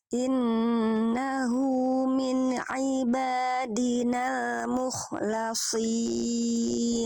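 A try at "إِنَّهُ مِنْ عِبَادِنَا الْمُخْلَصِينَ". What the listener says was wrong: Jelaskan kho-nya sedikit lagi, ya. Jadi kho-nya kurang neken di makhrajnya mukhlasin. Jadi biar nggak cuma lewat sih bunyi kho-nya.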